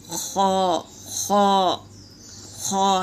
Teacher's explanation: ये खरखरी आवाज़ से निकालेंगे और ये पुर है, अब भी हम पढ़े थे और इसको निशानदही कर लो, ये पुर है।